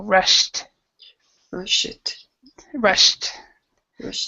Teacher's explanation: Okay, now as far as that goes, the word rushed, it's a past tense ed, and it has a sh sound. And with the sh sound, it's a t after that.